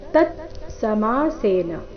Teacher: ತತ್ಸಮಾಸೇನ ಮೊದಲು ಪೂರ್ತಿತ ನಂತರ ಅರ್ಧತ